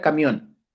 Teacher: podríamos hablar acerca de la palabra camión termina en n y la voz la fuerza y la intensidad la voz cae en la última sílaba